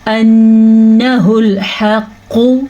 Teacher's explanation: نون کے اوپر شد ہے تو شد کو غنے کے ساتھ پڑھیں گے